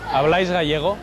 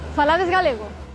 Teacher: Polo tanto, as dúas diferenzas que caracterizan as interrogativas do galego con respecto ao castelán son un inicio máis alto no momento en que se comeza a pregunta e unha caída máis forte na parte final da pregunta